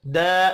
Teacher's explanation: दा अलिफ मद्दा है, एक अलिफ के बराबर खींच कर पढ़ेंगे।